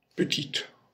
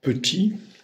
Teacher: En petite, on entend la consonne finale. En petit, on n'entend pas. On entend que la voyelle.